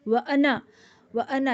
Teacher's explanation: اور یہ انا کا لفظ پورے قرآن مجید میں ایکسیپشن ہے کہ جہاں پر بھی آئے گا تو نون کے بعد کا الف نہیں پڑھا جائے گا. وانا، یہاں تو خیر ملا کے ہی پڑھا جا رہا ہے، ویسے ہی حذف ہوا ہے، لیکن اگر ہم اکیلے بھی پڑھتے ہیں تب بھی اس لفظ کو ہم چھوٹا پڑھیں گے.